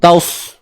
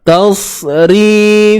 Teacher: Sad memang tebal, tapi jangan muncung.